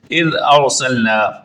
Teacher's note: اذ ارسلنا، اذ کی ذال کو درست پڑھیں گے، زبان کو اٹھائیں گے، اوپر والے دانتوں کے اندرونی کنارے سے لگائیں گے تو ذال کا مخرج صحیح طور پر ادا ہوگا